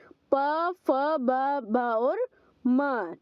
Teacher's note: जब हम इनका उच्चारण करते हैं तो जो हमारे दोनों होंठ हैं वो आपस में मिलते हैं